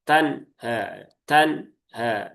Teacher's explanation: nunnya seakan-akan tertekan. dan semacam ada jeda sebentar